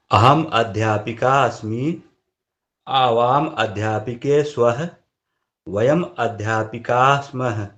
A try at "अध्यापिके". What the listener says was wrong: अब अध्यापिके में बलाघात नहीं कर रहे, अध्यापिके कर रहे।